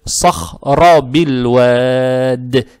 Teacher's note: Далее стоит буква «ро» с фатхой, фатха приобретает оттенок «о», и фатху не надо тянуть